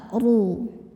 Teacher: Huruf ro dibunyikan secara tafkhim karena ro-nya ini berbaris dhammah. Jadi ini kita bunyikan tebal, ru.